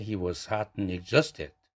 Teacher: 그러면 두 개의 대강세로 구성되어 있죠. hot과 exhausted 두 단어가 대강세를 받는데